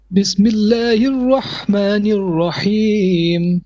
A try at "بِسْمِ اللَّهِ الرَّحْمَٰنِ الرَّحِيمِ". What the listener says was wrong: Bit of tikrar on your ra. Bismillahir Rahmanir Rahim.